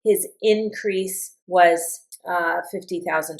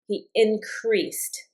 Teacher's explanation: His increase. And I've put the accent on the in.